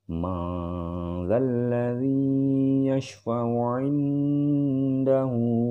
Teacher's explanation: Nun mati atau nun sukun menghadapi huruf zal, yang ini merupakan ikhfa, huruf ikhfa, dan ini harus dibaca dengan dengung atau disengaukan